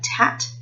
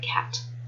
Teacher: So an example of consonant harmony is the child saying tat instead of cat. So the t sound at the end of the word has influenced the k sound at the start of that word